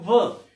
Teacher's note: व आप बोल के देख लो, व। ठीक है, दांत का भी प्रयोग हो रहा है, दांतों का भी प्रयोग हो रहा है और हमारे होठों का भी प्रयोग हो रहा है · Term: ओष्ठ प्लस दंत